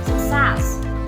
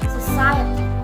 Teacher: Success has 2 syllables and the stress on the second syllable. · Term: primary stressing